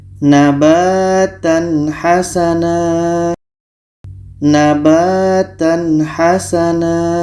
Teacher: Ha ini adalah huruf izhar halki, maka ini tanwin bertemu ha, hukumnya izhar halki, dibaca jelas. Tanwin jelas, ha jelas, dan di sini tidak ada dengung. Kita baca nabatan hasana, nabatan hasana.